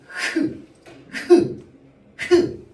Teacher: 목청의 통로를 좁혀서 공기를 마찰시키면서 소리를 냅니다. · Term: 목청 소리